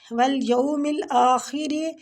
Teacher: را جو ہے یہ زیر کی وجہ سے باریک پڑے